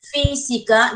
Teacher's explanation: yo encuentro la mayor fuerza de voz en fi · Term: sílaba tónica